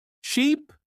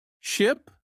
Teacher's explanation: Try to notice the long sound in sheep and the short sound in ship.